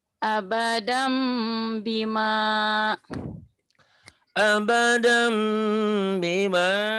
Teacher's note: Ya, ini nun mati atau tanwin apabila bertemu dengan ba, hukumnya jadi iklab. Bunyi nun mati, bunyi tanwin n-nya berubah menjadi m. Ember, tapi disertai dengan bilang ember kayak bindeng.